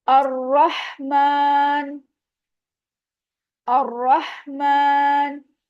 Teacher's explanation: रॉ जबर है, heavy होगा, मीम के ऊपर खड़ा जबर है, टू काउंट, इसको भी हम स्ट्रेच करेंगे।